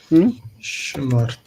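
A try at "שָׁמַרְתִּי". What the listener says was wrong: Okay, but the stress there is shamarti. Shamarti. That was a big old patach right there.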